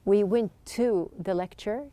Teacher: you can see that there's just one t sound